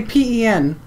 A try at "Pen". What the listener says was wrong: Okay. Sounds like pin.